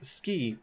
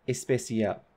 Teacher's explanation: Spanish phonotactics is a little bit different from English phonotactics in that they cannot have SC clusters in onsets. So they can't have SK in an onset, they can't have SP in an onset, they cannot have ST in an onset.